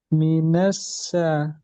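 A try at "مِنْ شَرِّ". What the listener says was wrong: Lebih angkat tengah lidah nasya. Nash bukan nas. Nas kurang nash.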